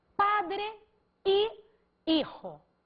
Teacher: O fonema de HI é I, porque o H é mudo foneticamente em espanhol.